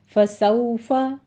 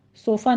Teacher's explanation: सौफ़ा में सीन सीटी की आवाज़ के साथ आगे वाउलीन है, अदा कीजिए होंठों को ना तमाम गोल करते हुए। फसौफ़ा, सोफ़ा नहीं कहना इसको, सौफ़ा युहासबु, हा वस्ते हलक से अदा करते हुए अलिफ मद्दा है, आगे अदा कीजिए।